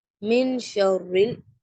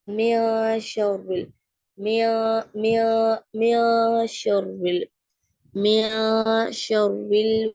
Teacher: நூனோட சவுண்ட முக்கால மறைச்சு ஊதுறோம் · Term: இஹ்ஃபா